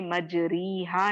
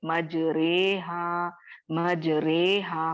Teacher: और यहाँ पर रॉ को आपको खड़ी जेर मिलेगी, लेकिन आप इसको खड़ी जेर के जैसे मजरीहा नहीं पढ़ेंगे, बल्कि इसको या मिलाते हुए मजरेहा मजरेहा पढ़ेंगे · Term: इमाला